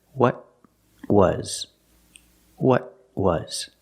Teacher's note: When you say what was. The T is a stop T. You put the tongue up and you stop the air. What was. What was.